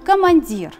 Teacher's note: ударение падает на третий слог слова поэтому гласные в первом двух словах остаются безударных первое глаз на